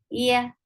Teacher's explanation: You are lifting middle of your tongue towards your palate. This is the articulation point of ya. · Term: ya of Arabi